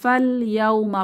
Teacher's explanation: পরবর্তীতে যে হরফটি আছে এটি হচ্ছে সুকুন যুক্ত তো এখানে আমাদের আলিফ মাদের কার্যকারিতা থাকবে না ফা সরাসরি লাম সুকুন কে ধরবে